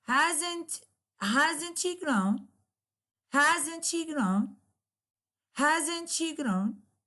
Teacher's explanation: a negative yes, no question with a falling instead of rising tone, because we know with yes, no question, always there is a rising tone at the end of the question, while with the exclamatory question, there will be a falling instead of rising intonation.